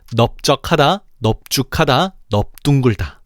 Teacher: 이 세 단어만큼은 비읍이 남고 리을이 탈락한다는 거야. 널쩍하다, 널쭉하다, 널둥글다가 아니라는 거지.